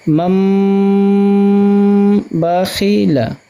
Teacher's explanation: نون ساکن کے بعد لفظ با ہے تو ہم اس کو نون کو میم سے بدل کر پڑھیں گے، میم کے اوپر جزم آ جائے گا، نون حذف کر دیا جائے گا، میم میم زبر مم با زبر با مم با خازر خی مم با خی لام زبر لا مم با خی لا۔ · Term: نون کو میم سے بدلنے